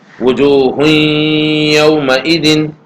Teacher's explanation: دونوں کو اگر ہم ملا کر پڑھیں گے تو تنوین کی آواز اور تنوین کا جو ادغام ہے وہ یا میں ہوگا · تنوین کا ادغام یا میں ہو گیا